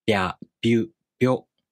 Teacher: you make the tongue position of the [i] vowel while you make the [b] consonant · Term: Yōon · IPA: [bʲ]